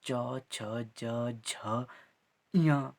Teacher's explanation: चवर्ग का जो उच्चारण स्थान है वो हमारे पास तालु होता है।